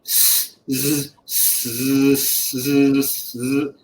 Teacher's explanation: If you make the vocal cords vibrate, you will get zzz. So you should be able to alternate between zzz, zzz, zzz, and when you do that, you will have this vibration in the throat when you say zzz. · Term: vocal cord vibration